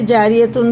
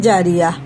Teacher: گول تا پر وقف کرنا ہو تو ہائے ساکن، یہ دیکھو ساکن ہو جائے گی، اگر اس پہ وقف کرنا ہے نا تو ایسی ہا بن جائے گی، بن جاتی ہے، جیسے جاریتن سے جاریہ، ٹھیک ہے نا، ایسا ہو گیا جی، جاریتن تھا لیکن آیت سے کیسا ہو گیا، جاریہ۔